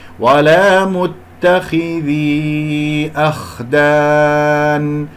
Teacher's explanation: لا أفخم الهمزة لأن جاورة الخاء المفخم